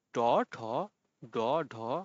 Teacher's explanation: এগুলো উচ্চারণ করার সময় জিভের ডগা মূর্ধার সঙ্গে লেগে যায় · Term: মূর্ধন্য ব্যঞ্জন